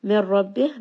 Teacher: idgham without ghunna, meaning nun sakin is not going to be heard at all. Instead merge this together with the ra and this is going to be heavy.